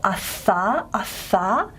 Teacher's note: If you go and then reverse the airflow, you can feel the cool air on your tongue. Okay, so you can feel just how spread out that airflow is for the frication there